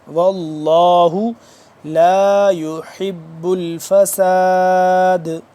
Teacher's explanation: واللہ موٹا کر کے پڑھیں گے لفظ اللہ کیونکہ اس سے پہلے زبر ہے